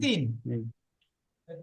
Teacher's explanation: তো ওপরের দুটো নিচের দুটো দুটো, এই চারটে দাঁতের আগা আর জিভের আগা, তাহলে চারটে দাঁতের আগা আর জিভের আগা মিলিত হয়ে উচ্চারিত হবে